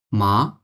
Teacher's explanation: third টোনটা হবে মাঝের থেকে এসে নিচের দিকে আসবে এবং তারপর উপরের দিকে চলে যাবে · কোডটাকে একই রকম রেখে কিন্তু যখন আমি সেকেন্ড টনটা উচ্চারণ করব সেকেন্ড টনটা একটু নিচ থেকে এসে উপরের দিকে চলে যাবে